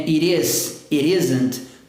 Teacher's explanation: o T trabalhando com som de R